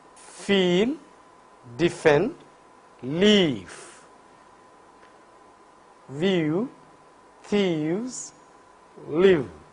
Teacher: lower lip is brought very nearer to the upper front teeth, so that there will be a narrow gap between these two articulators. The air from the lungs passes through this narrow gap with audible friction. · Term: Labiodental fricatives